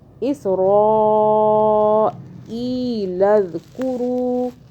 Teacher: اس را کو ہم نے موٹا پڑھا اور کھینچا، کیونکہ آگے بڑی مد آ رہی ہے، 6 الف کے برابر کھینچا.